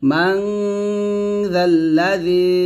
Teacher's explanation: জিহ্বার আগাটা উপরে দুই দাঁতের আগার সঙ্গে লাগিয়ে জালটা পাতলা উচ্চারণ করবেন